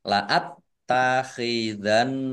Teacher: Laat takhidanna, taknya dibaca double, ada tasdidnya. Nun tasdid dibaca gunah atau mendengung, ditahan kira-kira 2 harokat biar tampak dengungannya.